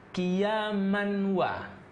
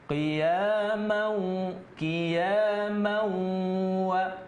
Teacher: tapi ini tidak dibaca qiyaman, tapi masuk dia ke huruf waw itu, maka dia jadi dengung. Makanya idgham bi gunnah.